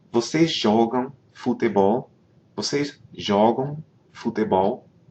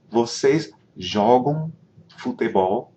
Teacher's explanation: Vocês jogam futebol? Again, you don't hear me pronounce an M at the end